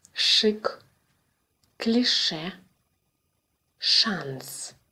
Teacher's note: Like Ш in English, but with tongue further back in the mouth.